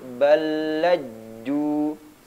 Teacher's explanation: ketika bertasdid dia tidak diqolqolahkan